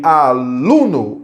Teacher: Então, muita gente pergunta, professor, por que a palavra aluno não é acentuada? Porque aluno, o lu é mais forte, é palavra paroxítona.